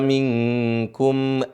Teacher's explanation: Nun bertemu dengan syin jadi nunnya disamar seharusnya limanya tapi disamarin huruf nunnya tidak terdengar dengan jelas huruf nunnya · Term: ikhfa